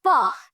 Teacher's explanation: ऊपर के दांत यूज हो रहे हैं, नीचे का लिप यूज हो रहा है, दैट्स व्हाई ये है दंतोष्ठ व्यंजन का एग्जाम्पल।